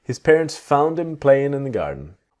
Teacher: The G in playing often disappears.